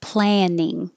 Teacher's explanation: the vowel is a. So you open a lot and keep your lips back